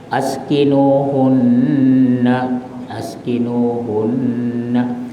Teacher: Wajib dengung berapa lama? 2 harakat. Askinuhunna, askinuhunna, jangan pula panjang sangat. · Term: wajibul gunnah